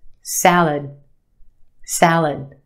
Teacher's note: the second syllable is our schwa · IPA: ˈsæl-əd